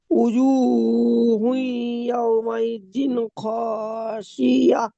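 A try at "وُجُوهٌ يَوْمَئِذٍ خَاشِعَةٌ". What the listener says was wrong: জি, মাশাআল্লাহ, সুন্দর।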